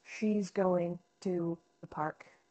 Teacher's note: stressed for instance in the sentence she's going to the park she's going and park would typically be stressed